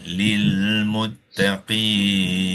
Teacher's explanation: masa pembacaan secara wakaf nun baris atas ni disukun kita panggil dia sukun mendatang